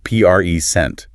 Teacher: Stress the first syllable, present, and it's a noun.